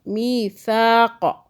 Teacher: میثاق فا کو سافٹ پڑھنا ہے. زبان کو باہر کیجئے. پھر یہ سا ادا ہوگا سافٹ. سیٹی یعنی سین کی آواز میں نہیں پڑھنا اور قاف کو کھینچنا بھی نہیں ہے.